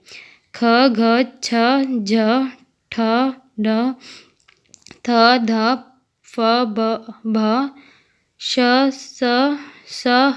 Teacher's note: ख, घ, छ, झ, ठ, ढ, थ, ध, फ, भ, श, स, ह महाप्राण व्यंजन है। इनके उच्चारण में हवा की अधिक मात्रा तथा हवा अधिक शक्ति के साथ बाहर आती है।